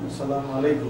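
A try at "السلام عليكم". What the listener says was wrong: Alaikum, alaikum नहीं. Assalamu alaikum. Alaikum. I and O are there, not A in Arabic.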